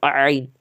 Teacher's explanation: हलक से जो है दरमियानी हलक से जो है आइन निकालते हैं